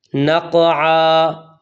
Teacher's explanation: قاف پر قلقلہ ہے، قلقلہ ادا کرنا ہے۔ کچھ لوگوں کو سنا وہ پڑھتے نقعا نقعا، یعنی قاف کو کاف باریک کاف بنا دیتے ہیں اور عین کو حمزہ کر دیتے ہیں۔